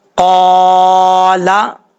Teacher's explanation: قاف کے اوپر زبر ہے، قاف کو پر پڑھیں گے